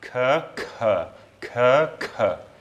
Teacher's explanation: That second one is aspirated, and you can really, I can feel a puff of air come out my mouth when I pronounce that second one, and only a very, very little bit of air come out when I pronounce that first one